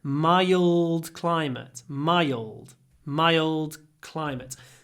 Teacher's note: it's in the throat it's dark L